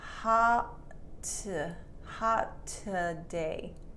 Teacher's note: you don't say the T twice the T is only said once